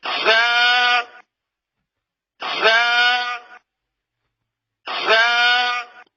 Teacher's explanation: اب اس میں زبان کی ٹپ بھی آ رہی ہے، اور سامنے والے 2 دانت اوپر والے بھی آ رہے ہیں اور نیچے والے دانت بھی آ رہے ہیں. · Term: زا کا مخرج